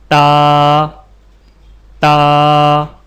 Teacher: زبان کی نوک کو سامنے والے اوپر کے 2 دانتوں کی جڑ سے لگا کر باریک آواز میں پڑھیں